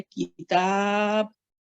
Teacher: अगर वक्फ करेंगे तो हम पढ़ेंगे किताब, बा जो है कसरा जो है वो सुकून में चेंज हो जाएगा